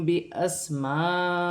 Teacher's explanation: हमज़ा पर जज़म की हरकत है, हमज़ा को झटके के साथ पढ़ा जाएगा. मीम साकिन के बाद बारी है, मीम साकिन में इख्फा होगा. इसे इख्फा माल गुन्ना होगा. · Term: इख्फा शफ़वी